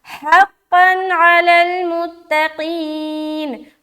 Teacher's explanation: हा को सीने की तरफ से निकाल रहे, क़ाफ़ दो ज़बर क़न मोटा करते हुए क़न।